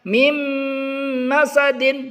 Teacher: nun sukun ini kita leburkan ke huruf mim. Jadi kita bacanya mim masadin. Tidak boleh kita baca min masadin. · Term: idgham bi gunnah